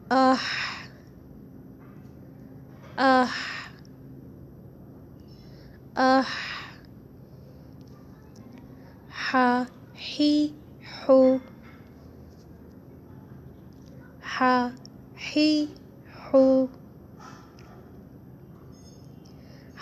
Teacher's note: ہا، جو ہمارے گلے کے درمیان سے نکلتا ہے۔